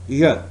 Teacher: The articulators involved are hard palate and front of tongue. And the sound is y. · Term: platal